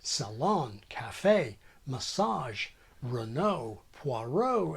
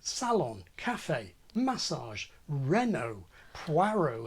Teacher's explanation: One well-known difference between American and British English is the stressing of words taken relatively recently from French. In many such words, American English uses a stress pattern reflecting the final phrase accent of French